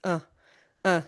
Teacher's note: the schwa sound is this completely relaxed neutral sound. It's uh uh so your jaw just hangs loose.